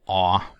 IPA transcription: ɔ